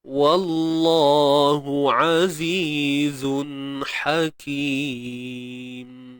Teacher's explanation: Tanwin bertemu ha pedas, izhar. Jelaskan tanwin pada zai tersebut. Kemudian ha pedas macam biasa, satu harakat.